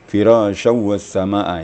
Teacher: Berdekatan dua harus sama panjang. Panjang menjadi 2,5 alif atau 5 ketukan ya. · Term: Mad wajib muttasil